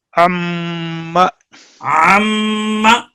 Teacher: یہ یہاں عم میم کا میم میں ادغام ہے